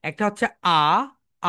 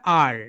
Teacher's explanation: British sound আ, and American sound আর